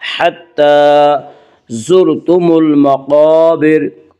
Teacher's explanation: खड़ा ज़बर को एक अलिफ के बराबर खींच कर पढ़ेंगे। हत्ता ज़ुरतुमुल मक़ाबिर, यहाँ रा को पुर पढ़ेंगे।